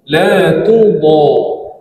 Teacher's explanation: Dan panjang 6 harakat mad lazim kalimi musaqqal